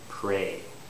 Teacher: you notice how I have a lip rounding